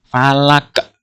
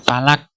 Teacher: Qaf ini dibaca sukun karena di akhir ayat. Falaq itu, qaf itu termasuk huruf qalqalah. Oleh karena itu, cara membacanya harus dengan cara memantul.